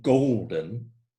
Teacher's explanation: a stressed syllable followed by an unstressed syllable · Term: trochaic foot